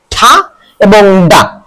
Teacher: এই দুইটা উচ্চারিত হয় আমাদের যে জিহ্বা এটা মুখের উপরের তালুর সাথে টাচ লেগে